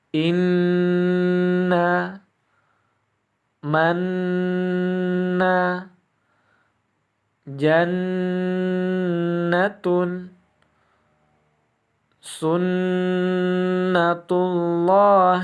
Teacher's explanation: cara membacanya yaitu mendengung selama dua ketukan atau dua harokat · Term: ghunnah musyaddadah